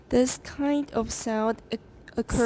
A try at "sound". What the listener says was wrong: Sound 那个 n 要重一点。